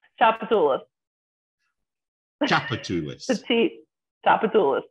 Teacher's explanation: The T is completely silent.